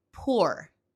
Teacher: Y algunos pronuncian por, pero para mí está en un punto medio entre u y o